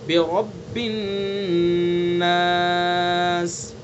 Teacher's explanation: बिरब्बिन नास, बिरब्बि, और रा जो है रब का रा को पुर करके पढ़ेंगे, मुँह भर के।